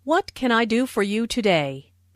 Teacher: Notice that this question starts with what? So the intonation drops at the end of the question.